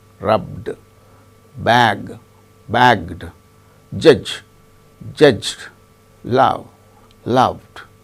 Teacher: in all these cases the present tense ends with a voiced sound